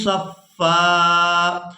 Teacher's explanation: وقف کی صورت میں ہم نے فا پر ایک زبر ادا کرنی ہے اور اس کو ایک الف مقدار کھینچ کر ادا کرنا ہے۔